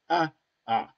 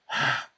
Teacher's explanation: le A avec Aïn, pour dire Adonai, le A se prononçait au fond de la gorge